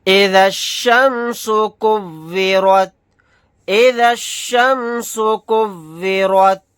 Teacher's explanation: را کے اوپر زبر ہے، را کو موٹا یعنی پر پڑھیں گے